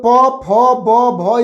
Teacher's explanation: कभी नहीं हो सकता है कि बिना ओठ सटाए हम लोग प फ ब भ या म बोल सके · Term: ओस्ट